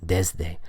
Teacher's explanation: There's vibration in that sound, so the S changes to a voiced pronunciation.